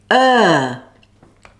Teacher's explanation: long sound the jaw is relaxed and the tongue is central it's similar to the schwa sound but longer say the two sounds together like this got that if not · er is a long sound the jaw is relaxed and the tongue is central it's similar to the schwa sound but longer say the two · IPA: /ɜː/